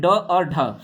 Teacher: किसको उत्क्षिप्त व्यंजन को नेक्स्ट अगला है इनका उच्चारण करते समय हमारी जीभ जो है हमारे तालू को छूते हुए झटके के साथ जो है नीचे की तरफ आती है